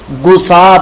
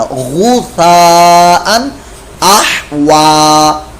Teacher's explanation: غین کی آواز حلق کے اوپر والے حصے سے نکالے گا. غین کی جگہ آپ کی آواز جو چینج ہوگی وہ گاف کے ساتھ ہے, گسا پڑھ دیں گے گو, یہ گاف کی آواز ہے.